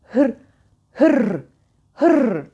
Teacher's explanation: titreyerek damağıma çarpıyor çarpıyor ve iniyor